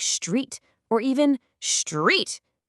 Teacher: Take a cluster like stir in the word street. That powerful preloaded R can actually cause the T to become a che and the S to become an SH sound. So the word street can come out sounding like street or even street.